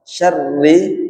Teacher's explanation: roknya tipis, kemudian getarannya sedikit